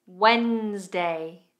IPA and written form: wenzdeɪ (Wednesday)